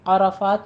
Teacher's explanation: تم من میں میم ساکن کا قاعدہ آ رہا ہے ادغام شفی، اور آگے من عرفات میں نون ساکن کا قاعدہ آ رہا ہے اظہار حلقی. عرفات میں عین وسط حلق سے ادا کیجیے اور را کو پر پڑھنا ہے